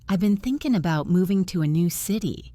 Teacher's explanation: I said I've been. And I didn't say thinking with a strong G sound at the end. It was softer, almost like thinkin'.